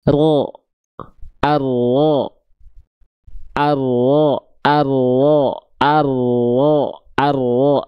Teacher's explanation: Jadi ujung lidahnya dia nggak nempel ke langit-langit, yang nempelnya itu adalah bagian punggung lidah. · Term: huruf ro